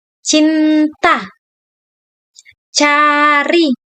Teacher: bunyi konsonan letupan langit-langit khas bahasa Indonesia